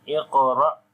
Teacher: Again we make heavy sound and qalqala on the qaf, ra, and here is again jerk sound as hamza is coming with sukoon sign on it, so we make jerk sound.